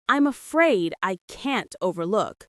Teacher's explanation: Stresses on afraid and look in overlook. The can't is very distinct and strong here.